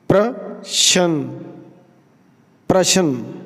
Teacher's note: ਆਪਾਂ ਪਰਛਨ ਨਹੀਂ ਬੋਲਣਾ ਰਾਰਾ ਪੂਰਾ ਨਹੀ ਬੋਲਣਾ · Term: ਪੈਰ ਵਿੱਚ ਰਾਰਾ